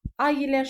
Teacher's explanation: bu saitlərin arasına mütləq y samiti artırılmalıdır